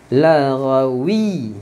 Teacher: Waw masuk dekat ya ni sebab ada sabdu. Pegang sabdu.